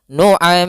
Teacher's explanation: Dan gunnahkanlah huruf mim serta nun ketika ia bertasydid keduanya. Maka di sini ada mim bertasydid. Cara membacanya mimnya ditahan juga.